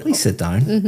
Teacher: my intonation is going up